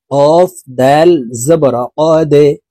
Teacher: দাল কলকলার হরফ নিচের দিকে ধাবিত করে ধাক্কা দিয়ে উচ্চারণ করতে হবে।